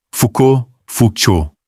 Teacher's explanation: O L e o T são mudos, o AU é um O fechado. E a tônica cai no fim, como quase sempre em francês.